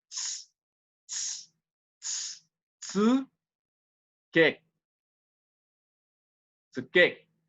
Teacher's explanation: não é nem u, é tsu. É assim um u sorrindo